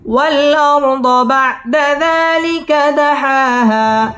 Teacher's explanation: দাহা মধ্যে তবাই এক আলিফ টেনে পড়তে হবে